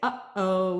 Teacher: we close the throat we call that a glottal stop